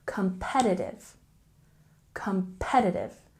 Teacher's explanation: And lastly, we have competitive with a stress on the second syllable